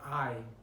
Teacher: the word I consists of the A vowel, and only about the last quarter of the diphthongs does the glide to I become noticeable